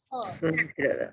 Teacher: Dia ada di tenggorokan bagian luar atau bagian atas. Secara sifat sama dengan huruf H, dia juga memiliki sifat al-hamas ya. Jadi nafasnya berhembus. Sama suaranya tidak tertahan. Jadi lepas Kho. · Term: huruf Kho